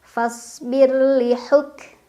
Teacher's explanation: jadi tipis tipis itu lidahnya datar aja enggak usah ngangkat fasbirliuk kafnya punya sifat syiddah suaranya tertahan dulu baru keluar anginnya Hames